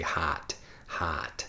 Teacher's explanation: my nasal pronunciation I'm speaking with my nose it's a bit more of a Chicago accent